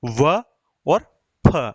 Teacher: व का उच्चारण कर रहे तो क्या हो रहा है? दांत और होठ दोनों का मिलन हो रहा है ना, दोनों से व का उच्चारण हो रहा है। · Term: दंतोष्ठ